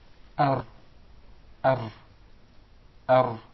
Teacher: There is a repetition of the Ra. He actually pronounced several Ra's.